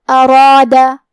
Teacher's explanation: کلمت ارادہ میں حرف الراء پہ زبر ہے تو یہاں حرف الراء کا حکم ہے تفخیم، ہم حرف الراء کو موٹی آواز میں پڑھیں گے، اور کیونکہ اس کے بعد مد الف ہے تو ہمیں مد الف کو بھی بھاری آواز میں پڑھنا ہے